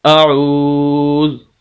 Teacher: وقف کریں گے، زال کو ساکن کر دیں گے، اعوذ، تو اس طرح وقف ہو جائے گا۔